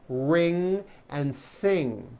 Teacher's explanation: ng sound comes out of your nose it's a combination of an n and a g and it is found at the ends of words like ring